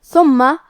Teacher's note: حرف الثاء کی ادائیگی زبان کے سر اور اوپر والے دانتوں کے اندرونی کناروں سے